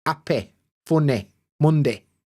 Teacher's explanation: we basically clip the end of the Y sound. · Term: Y clipping